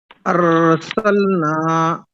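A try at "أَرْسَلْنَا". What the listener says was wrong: ये गाड़ी की तरह आवाज नहीं होना चाहिए। अरसलना, इस तरह नहीं, अरसलना। जी, ये रा बारीक है पुर है? क्यों पुर है? इस तरह बोलिए। हाँ, इस तरह बोलिए, रा साकिन से पहले जबर है।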